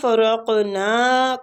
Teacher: قاف مستعلیہ حروف ہے پر پڑھیں گے قلقلہ بھی کریں گے قاف پہ